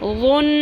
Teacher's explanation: نون کی آواز کو تھوڑی دیر لمبا کریں گے، یعنی ناک کی ہڈی میں ٹھہرائیں گے آواز کو، غن، لیکن اخفا نہیں کرنا، غن ایسے نہیں پڑھنا، وہ اخفا ہوتا ہے۔ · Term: غنہ